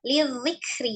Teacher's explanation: Ada tasdid di huruf dzal, hati-hati. Huruf dzal memiliki, walaupun dia sifatnya al-jahru, jelas ya. Tidak ada aliran nafas, tetapi suaranya tetap mengalir. Karena memiliki sifat radhah.